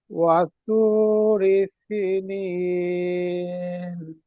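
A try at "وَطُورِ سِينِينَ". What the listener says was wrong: ওয়াতুরি সি, সিন ইয়াজের সি, এখানে ইয়া মাদ্দা আছে, একটু টান দিয়ে বলবেন। ওয়াতুরি সিনিন।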